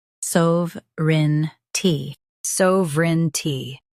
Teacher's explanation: Focus on SOV and keep rin light.